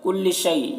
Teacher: یا لین ہے، اسے نرم آواز کے ساتھ جلد پڑھیں گے